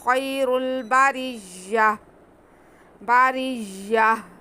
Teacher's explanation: اولئک ہم خیر البریہ، باریہ، یہاں پہ یا ساکن سے پہلے زبر ہے، یا لین ہے، آگے را پہ پیش ہے، را پر پڑھا جائے گا، را کو پھر آگے بھی ملائیں گے، یہاں پہ را کے نیچے زیر ہے تو را باریک پڑھا جائے گا، پھر را کو یا کے ساتھ ملائیں گے، اینڈ میں ہم نے گول تا پہ وقف کرنا ہے تو اسے ہم نے ہا میں بدل کے ساکن کر دینا۔